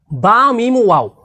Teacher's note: ঠোঁটের প্রথম মাখরাজ হলো দুই ঠোঁট থেকে বা মিম এবং ওয়াওকে উচ্চারণ করতে হয়।